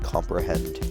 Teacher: is an anapest which is our first three syllable metrical foot it is two unstressed syllables followed by one stressed syllable